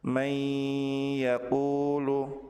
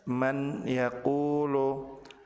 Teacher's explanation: Apabila nun sukun bertemu dengan ya, maka nun sukun dilebur ke huruf ya dengan ditahan dan disertai dengan gunnah. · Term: Idgham bi gunnah